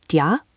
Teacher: The do you gets crushed together. It becomes ja or even just a j sound.